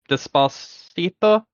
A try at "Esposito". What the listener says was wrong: Despacito with an E, no D.